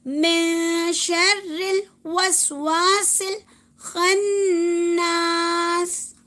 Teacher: شین کی وجہ سے ہم نون ساکن کو کیا کریں گے؟ آواز کو چھپائیں گے، نون کی آواز کو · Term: اخفا